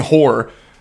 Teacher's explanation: When I say horror, I usually never pronounce that middle syllable of the r. So it sounds like I'm just saying horror.